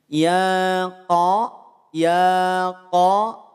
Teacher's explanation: Kaf saat berharakat fathah jangan dimonyongkan